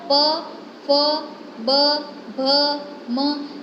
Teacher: उसके बाद है प, फ, ब, भ, म, इसमें से है वो आपके दोनों लिप्स हैं वो टच करते हैं एक दूसरे के साथ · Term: लिबेलियल